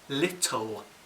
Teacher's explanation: The back of my tongue is much higher in the second L than in the first. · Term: dark L